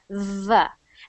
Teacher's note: say vote and you see that V sound your teeth your your top teeth should be touching your bottom lip when you make that sound V and you should hear that like a vibration it kind of sounds like V so try doing that sound